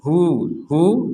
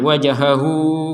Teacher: Hu dipanjangkan 2 harokat. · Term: panjang 2 harokat